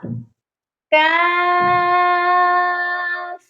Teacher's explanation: اس کاف کا مخرج دو نقطوں والے قاف والے مخرج سے ذرا ہٹ کر منہ کی جانب سے